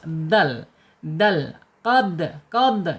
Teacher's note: dal secara makhraj ada di alisan ujung lidah menyentuh pangkal gigi seri atas